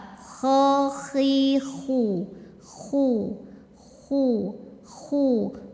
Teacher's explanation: keluarnya dari tenggorokan paling atas ya ini enggak bersih suaranya kemudian tebal kho khi khu khu khu khu bibir kita ngumpul karena harakatnya